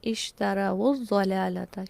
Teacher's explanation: یہ لفظ basically originally کیسے ہے، اشترو، رو، را زبر و رو، واو لین تھا، جمع کے لیے استعمال ہوا، آگے کا لیٹر چونکہ ساکن ہے لہٰذا اس واو کو پیش دے دی گئی اور ہم اس کو پڑھتے ہیں اشتروا الضلالۃ، کیونکہ اگر ہم اس کو پیش نہ لگائیں تو ان 2 لیٹرز کو ملا کے پڑھا نہیں جا سکتا، ٹھیک ہے۔ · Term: واو لین جمع